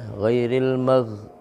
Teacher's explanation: ketika menyebutkan ghain ketika sukun itu jangan dipantulkan.